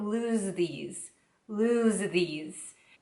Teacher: the sound in the lose and the th sound in these are combined a little bit